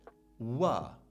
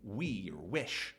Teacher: it's an approximant, so it's almost vowel-like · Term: voiced labial velar consonant